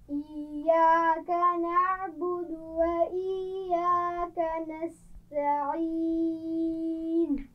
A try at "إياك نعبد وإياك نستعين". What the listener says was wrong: بہت سختی سے نہیں ملائیے گا.